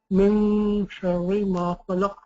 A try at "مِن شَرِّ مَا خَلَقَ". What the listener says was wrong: Yeah, make sure you don't pronounce the noon, okay? Just before your tongue touches the teeth, you keep the tongue away from the teeth. من شر ما خلق.